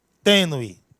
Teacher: Algo tênue, algo diminuído, bem dirimido, não é isso? Observe, esse U, ele está sendo fracamente pronunciado. Ninguém diz tenue, não, tenue. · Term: ditongo crescente